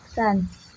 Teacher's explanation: vokal nasal, di mana udara mengalir baik melalui rongga mulut maupun rongga hidung